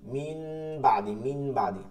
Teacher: ওই নুন সাকিন বা তানবিনকে গুন্নাহর সহিত মিম দ্বারা পরিবর্তন করিয়া পড়তে হয়